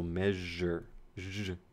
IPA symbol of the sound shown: ʒ